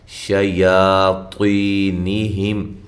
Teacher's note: شَيَاطِينِهِمْ، تو کو خوب موٹا کریں، یا کو ایک الف کی مقدار کے برابر لمبا کریں گے